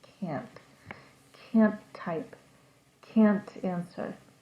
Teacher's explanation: you can hear the complete vowel with the CA N and you hear a little T sound at the end of the word but it's pretty quiet can't can't type can't answer